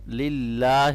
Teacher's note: اللہ کے نام کو ہم باریک پڑھیں گے کیونکہ یہاں پر زیر ہے